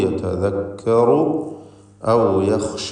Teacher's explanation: യതദക്കറു എന്ന് പറയുമ്പോൾ റാഇന് തഫ്ഖീമുണ്ട്.